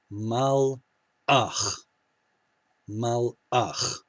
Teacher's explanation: This has a schwa in it, not a dagesh. So it has that spirantized, gravelly ch sound. And the schwa is letting you know that it's the end of a syllable.